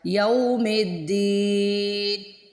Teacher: یوم کو دین سے ملا دیا جب، تو درمیان میں جو الف ہے حمزۃ الوصل کا اس کو میوٹ کر دیا ، اس کو نہیں پڑھا، یہ حمزۃ الوصل کا جو الف